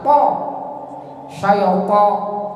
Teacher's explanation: To di mana to? To ujung lidah di pangkal gigi atas.